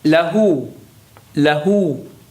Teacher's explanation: Notice the hu is being extended a little bit.